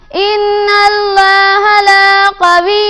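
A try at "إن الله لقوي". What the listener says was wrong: لام کو لمبا نہیں کرنا. لقوی عزیز. لقوی عزیز.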